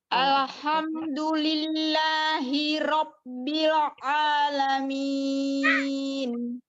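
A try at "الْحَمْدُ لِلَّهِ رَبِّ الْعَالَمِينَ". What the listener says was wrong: Ya, itu nanti dilatih lagi ya, masih tebal bilnya.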